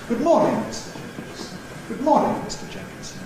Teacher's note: If you think of a vocative after good morning, then it's going to have a nice low tone. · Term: low-level tone